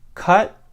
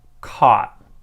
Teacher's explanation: first with the short mid jaw height vowel uh and then second with the long low jaw height vowel ah